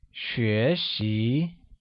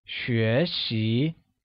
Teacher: 学习 is pronounced with a mid-rising tone on both E and I.